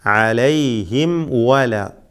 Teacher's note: ഇവിടെ സാക്കിനായ മീം ചുണ്ടുകളിൽ നിന്നും ഉച്ചരിക്കുന്ന അക്ഷരമാണ്. വാവും ചുണ്ടിൽ നിന്നും വരുന്ന അക്ഷരമാണ്. രണ്ടും ഷഫവിയായ ഹർഫുകളാണ്.